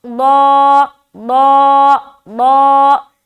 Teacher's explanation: ज़ाद को मोटा अदा करना है, पहली बात। दूसरी बात के खींचना भी है एक अलिफ के बराबर।